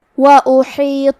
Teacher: کلمت وَأُحِيطَ الف پہ پیش ہے، ہا کے نیچے زیر ہے، تو ہم یہ دونوں حرکات کو ظاہر کریں گے اور ہا کو ہم حلق کے درمیان والے حصے سے پڑھیں گے. آخری میں تو پہ زبر ہے، لہذا ہمیں زبر کو ظاہر کرنا ہے.